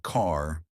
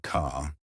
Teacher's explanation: Unlike British English, Americans love their R sounds, but they pronounce them softly. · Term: soft R sound